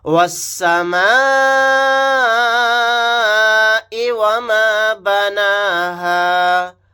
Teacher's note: یہاں پر مد متصل کا قاعدہ ہوگا کیونکہ یہاں پر حروف مدہ کے بعد حمزہ اسی کلیمے میں ہے، تو اس مد کو ہم 4 الف کی مقدار کھینچ کر پڑھیں گے